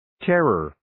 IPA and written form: 'terər (Terror)